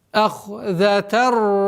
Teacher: Правило идгам без назализации.